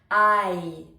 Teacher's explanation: Donc, on voit qu'il y a un A en premier et on finit avec le I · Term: diphtongue